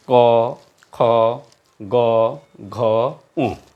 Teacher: এই বর্ণগুলো উচ্চারণের সময় হলকের গোড়া অর্থাৎ কণ্ঠের গোড়া থেকে উচ্চারণ হয়, জিহ্বার গোড়া তার বরাবর উপরে স্পর্শ করে উচ্চারিত হয়, এই জন্য এগুলোকে কণ্ঠজাত বর্ণ বলা হয়।